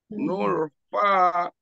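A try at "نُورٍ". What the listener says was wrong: madnya masih kurang sepertinya Pak madnya masih kurang lebih mengalir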